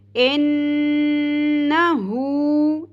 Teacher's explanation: ان، نون زبر نہ، ان، ہا الٹا پیش ہو. حلق کے سب سے نچلے والے حصے سے ہا کو ادا کرنا ہے ہم نے